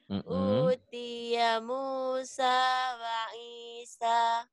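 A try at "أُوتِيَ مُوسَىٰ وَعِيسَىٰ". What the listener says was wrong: Masih ya nadanya. Nadanya kayak beban berat. Dia Musa wa Isa. Nadanya jangan digelek-gelek gitu ya. Jadi kayak minum dihenti-henti gitu ya. Kayak selang air dipencet-pencet gitu ya. Jadi keluar airnya. Datarin aja. Utiya Musa wa Isa.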